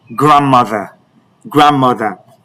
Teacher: No, the D is silent in grandmother.